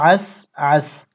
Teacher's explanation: ওয়াকফের সময় সিন সাকিন হবে এবং উচ্চারণ হবে আস আস والليل إذا عسعس واو صد জবর